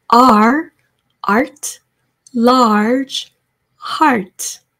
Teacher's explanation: R 이 소리는 밝게 아한 다음 R 굴려주시는 거고요. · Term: Tart